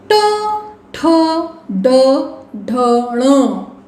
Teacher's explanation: We are pronounced by touching मूर्धा. मूर्धा means hard palate. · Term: मूर्धज्ञाः